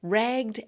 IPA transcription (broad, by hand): ræɡd